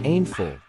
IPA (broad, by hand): ˈhænd.fʊl